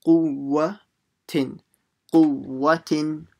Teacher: Now you need to say the second waw because it's a mushaddada.